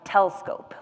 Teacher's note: it might come out more as telescope, like that middle syllable kind of disappears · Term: telescoping